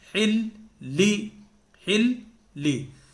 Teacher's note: یعنی آپ یہ دیکھیں کہ 2 مرتبہ پڑھا جا رہا لام، جو لام تشدید والا ہے.